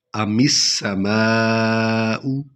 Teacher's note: میم کو سین میں ملائیں گے کیونکہ سین پر شد ہے. الف لام لکھنا ہے، پڑھنا نہیں ہے یہاں کیونکہ سین پر شد ہے.